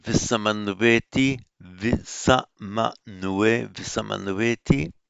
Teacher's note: And that's the only way of doing it in Sanskrit, where you've got a word ending in an M, and the next word begins with a vowel. The M does not become anuswara, it remains as full consonantal M, and the vowel is joined to it